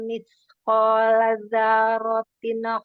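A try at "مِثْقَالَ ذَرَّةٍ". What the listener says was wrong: Ya, jangan zarotin. Langsung disukunkan roh.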